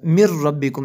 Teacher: نون ساکن کے بعد را ہے حروف جر معلوم میں سے، تو یہاں پہ غنہ نہیں ہوگا ، من ربکم ایسے پڑھیں گے اس لفظ کو، من ربکم،